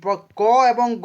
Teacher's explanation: এই প্রথম এবং তৃতীয় বর্ণকে উচ্চারণের সময় নিঃশ্বাস জোরে বের হয় না বলে এদেরকে অল্পপ্রাণ বর্ণ বলা হয়